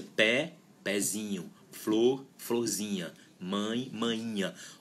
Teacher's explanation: A sílaba tônica estava no radical e ela passa a fazer parte do sufixo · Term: sílaba tônica se desloca